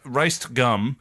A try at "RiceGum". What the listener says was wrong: Rice gum. No D in there.